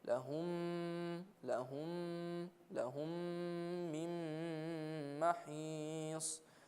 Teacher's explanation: Then after that is the word mim and then noon. So from the mim of lahum to the mim of min, we do idgham. We connect them and we do nasal. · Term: idgham mim sakin with ghunna